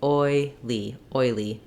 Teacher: So now my ul sound is more of a light L because it's followed by the E sound. So I can really just say my diphthong oi, and then my start with my light L going to the E.